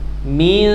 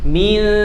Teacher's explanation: Min, suaranya dekatkan dengan makhraj shin. Shin itu tengah lidah, wastul lisan. Min, min. Selama bunyi ikhfa itu bukan bunyi makhrajul huruf, bukan nun, bukan tanwin, ya, atau bukan shin.